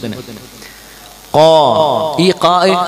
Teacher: ഖാ എന്ന ഉച്ചാരണം അറബികൾ ഖാ എന്ന് ഉച്ചരിക്കാറില്ല, അതിന്റെ ഉച്ചാരണ സമയത്ത് ശബ്ദവും കാറ്റും മേലണ്ണാക്കിലേക്ക് ഒതുക്കി നിർത്തിയിട്ട് ഖാ എന്ന ഉച്ചരിക്കുക. ഇസ്തിലാ എന്ന് പറയും അതിന്റെ സിഫത്തിന്.